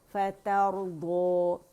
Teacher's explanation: فتا دونوں باریک ہیں, را موٹا ہے